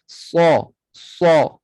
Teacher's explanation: Jadi sad ini huruf yang tebal. Isti'la, pangkal lidah terangkat. Kemudian dia juga itbaq, tengah lidah pun terangkat. Jadi bunyi sad ini lebih super duper tebal lah.